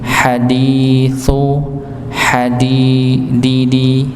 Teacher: tempat huruf dal ujung lidah bertemu dengan gusi bagian atas